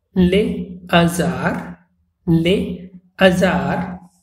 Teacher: Here also H is silent, but a liaison is not formed, even if a word begins with H and is followed by a vowel. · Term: H-aspiré